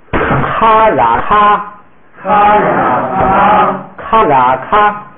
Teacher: 这个咔跟啦拼起来就是把那个咔声音延长一点